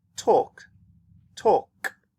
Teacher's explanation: you don't need a voice to say these words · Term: no voice